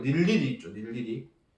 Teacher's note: 이중모음 의는 발음하지 않고 단모음 이로만 발음합니다.